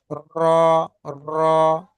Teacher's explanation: র উচ্চারিত হয় জিভের আগাটা আর দুটো দাঁতের মাঝখানের অংশটাকে বারবার লাগাতে হয়